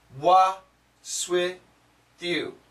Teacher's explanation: when there's an S next to a T, you can eliminate the T sound, so you get what's with you.